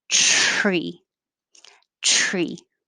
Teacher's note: begins behind the top teeth and drags along the top of the mouth